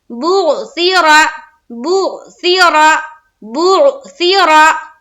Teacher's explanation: बा को फिर आयन से मिलाएंगे पेश की हरकत के साथ, बो, सा जेर सी, मजहूल से बचेंगे और मारूफ पढ़ेंगे, यानी कि सा जेर से नहीं, सा जेर सी, बुअसी, बुअसी, बुअसी। रा, रा के ऊपर जबर है और हमें मोटा करके पढ़ना है, यानी कि पूर पढ़ना है